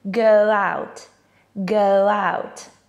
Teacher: A native wouldn't say go out, but with the W sound in between.